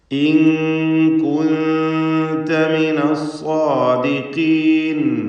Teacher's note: വീണ്ടും സാക്കിനത നൂൻ ശേഷം താ. ഇവിടെ ഇഖ്ഫാ ഹഖീഖി നൽകി 2 സാക്കിനത നൂനുകളെയും മറച്ച് മണിച്ചുച്ചരിക്കുക.